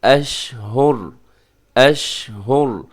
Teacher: آخر میں را جو ہے وہ ساکن ہوگی اور را موٹی پڑھی جائے گی